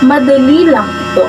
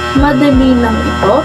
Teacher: ang tono o pitch ay pantay o pababa sa dulo. · Sa halimbawang ito, ang tono o pitch ay taas ng dulo sa pangungusap. Ito ay nagpapahiwatig na ang pahayag ay isang tanong at hindi katiyakan. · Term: nagpapahayag, nagtatanong